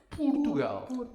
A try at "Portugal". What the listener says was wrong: Right? Not paw. It has to be up. Portugal.